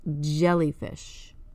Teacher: it's in the same tongue position as the CH but you feel the vocal vibration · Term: voiced